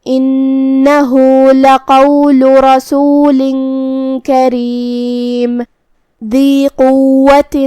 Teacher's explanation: قاف کو ہمیں تفخیم سے ادا کرنا ہے بھاری آواز میں. قاف حروف تفخیم میں سے ہے.